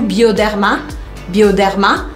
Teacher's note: lembrando que sempre tem que fazer a sílaba forte no final